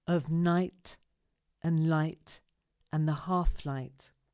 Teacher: we must be very careful to articulate the h and not say our flight · very careful to articulate the h and not say our flight the words we stress here are night light half